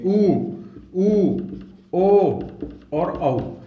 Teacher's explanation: जिन स्वरों को बोलने पर होठ की आकृति ओ के समान हो जाए वो तो कहलाते हैं वृत्ताकार, और जिनको बोलने के बाद में होठ की आकृति वृत्त के समान नहीं हो या ओ के समान नहीं हो उनको कहते हैं अवृत्ताकार।